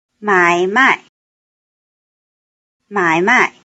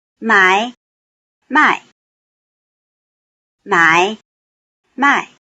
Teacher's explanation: they are in the same order in which the tones were originally presented with low tone followed by falling tone